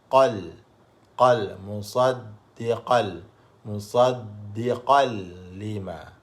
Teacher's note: Bila gunnah tanpa dengung. Masukkan tanwin itu ke dalam lam tanpa ada bunyi dengung. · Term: idgham bila gunnah